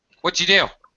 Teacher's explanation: this did gets reduced and blended with the T to basically a D sound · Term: drastic reduction